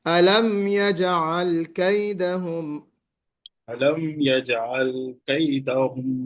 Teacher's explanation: अलम में गुन्ना नहीं कर, रुकना नहीं है, जल्दी पढ़ना है